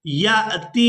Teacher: अब ये जो अलिफ है ये हमजा के अंदर बदल गया है। अब या को इस हमजा साकिन के साथ मिलाएंगे तो झटके के साथ अदा करेंगे।